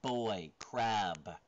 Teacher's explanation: It's a voiced bilabial stop.